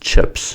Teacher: ‘P’ is an unvoiced consonant sound, so the plural will be an unvoiced sound as well as in ‘chips’ /ps/.